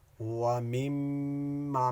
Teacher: میم کو میم میں ادغام کریں گے، ادغام مع الغنہ اس کو کہتے ہیں